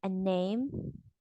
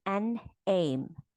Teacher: So a name, you pause after the word a, and then for an aim, you pause after the word an. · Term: plus juncture